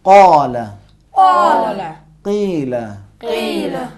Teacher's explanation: اور حرف قاف بھی یہ چھوٹی سی زبان جو لٹک رہی ہے اوپر کے حلق اور زبان کے درمیان، جسے کوا کہتے ہیں اردو میں اور عربی میں لحاد، اس سے زبان کی جڑ نرم تالوں سے زور سے لگا کے جدا کرنا ہے. حرف قاف صحیح ادا ہوگا.